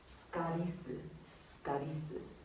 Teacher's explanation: Like, you can kind of omit the the u's in the su sometimes.